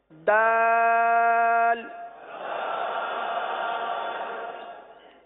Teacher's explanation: دال کا مخرج پہلے سن لیجئے کہ زبان کی نوک اور اوپر کے دانتوں کی جڑ سے یہ حرف ادا ہوتا ہے